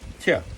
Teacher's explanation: And the T at the end is not a ch, like in English, it's a tia, tia. Soft T off the palate.